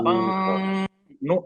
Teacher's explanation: आवाज नाक से निकल रही, नून की सिर्फ आवाज आ रही है, लेकिन मखरज, जबान टच नहीं हो रही है नून में, नून के मखरज पर टच नहीं हो रही है।